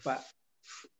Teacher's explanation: Hanya makhraj di huruf fa tadi kurang terdengar bunyi hamesnya. Itu nafasnya keluarnya.